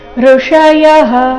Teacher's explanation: ಇಲ್ಲಿ ಸ್ವರ ಋ ಇದೆ ರಸ್ವ ಅದರ ನಂತರ ಮೂರ್ಧನ್ಯ ಷ ಋಷಯಹ ಯ ನಂತರ ಇರೋ ವಿಸರ್ಗದ ಉಚ್ಚಾರಣೆ ಹ ಎಂದು ಬರಬೇಕು ಇದು ವಿಸರ್ಗದ